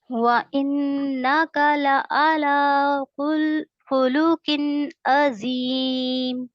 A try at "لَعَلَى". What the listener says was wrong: لَعَلَى عین کو واضح کریں اچھے سے. لَعَلَى خُلُقٍ عَظِيمٍ.